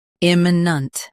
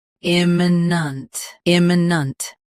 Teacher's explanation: Stress i first. Keep m and nent soft and quick.